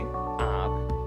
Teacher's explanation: इसका चिन्ह है पड़ी लाइन के ऊपर चंद्र बिंदु। इस ध्वनि का उच्चारण मुख और नाक की सहायता से होता है। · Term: अनुनासिक